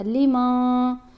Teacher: یہاں بھی احفا کیا, نون کی آواز کو ہم نے واضح نہیں پڑھا